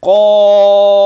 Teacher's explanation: ان القاف مفخمه وفي اعلى مراتبها، فالالف الذي بعد القاف في النطق تابع للقاف، والقاف مفتوح، فدي مرتبه عاليه من مراتب التفخيم.